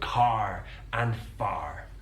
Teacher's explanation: in most British English accents it's non- rotic so we don't use that R but in the west country that R is pronounced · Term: rotic R, rhotic R